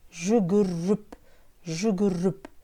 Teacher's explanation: В слове «жүгіріп» в третьем слоге звук «э» произносится как «ы», «ы». Если в первом слоге слова присутствует гласный звук «ы», то последующие буквы «э» тоже произносятся как «ы».